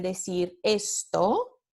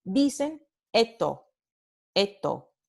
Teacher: Pues la elisión es digamos, un alófono de este fonema predorso alveolar fricativo sordo cuando ocurre de nuevo final de sílaba o final de enunciado. Entonces, muchos hablantes nativos del español, en lugar de decir esto, como la pronunciación fonémica, o esto con aspiración, dicen eto, con elisión